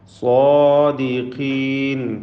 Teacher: സ്വാദിനും അതിൻ്റെ ദീർഘാക്ഷരമായ അലിഫിനും തഫ്ഖീം കൊടുക്കണം. ഖാഫിന് കസ്റാണ്, കുറഞ്ഞ തഫ്ഖീം മാത്രം നൽകി ഉച്ചരിക്കുക.